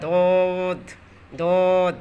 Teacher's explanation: জিহ্বার গোড়ার কিনারা, যেখান থেকে আপনি খাবারটা গিলে খাচ্ছেন তার কিনারা বলতে এক পাশ, তার বরাবর আপনি উপরের মাড়ির দাঁত নির্ধারণ করুন। উপরে আপনার মাড়ির দাঁতের গোড়ার সঙ্গে লাগাইয়া দোদ দোদ। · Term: দুয়াত